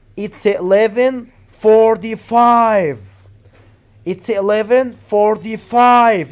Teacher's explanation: you have to put the stress on 45